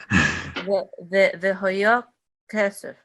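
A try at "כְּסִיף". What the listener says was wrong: Good. That was perfect.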